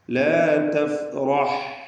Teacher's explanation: റാ തഫ്ഖീം ചെയ്യേണ്ട അക്ഷരമാണ്. ഹാ വ്യക്തമായി മഖ്റജിൽ നിന്ന് ഉച്ചരിക്കണം. അതിൻ്റെ സുക്കൂൻ വ്യക്തമാക്കി ഉച്ചരിക്കുക. റഖാവത്തിൻ്റെ അക്ഷരമാണ്, ലൂസാക്കി പറയണം.